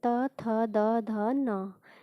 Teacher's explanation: ये दंत से यानी दांत से बोले जाते हैं। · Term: तवर्ग